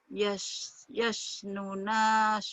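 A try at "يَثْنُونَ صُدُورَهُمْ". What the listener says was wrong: yasnunya panjang. Yasnuna sudurahum. Yasnuna sudurahum.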